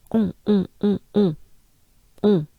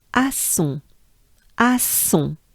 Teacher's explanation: it's pretty closed up and nasal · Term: on sound